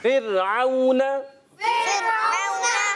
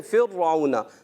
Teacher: را ساکن سے پہلے جب کبھی زیر آتی ہے تو وہ را ہمیشہ باریک ہو جاتا ہے ، یعنی ہم نے اس کو باریک پڑھنا ہے، پر نہیں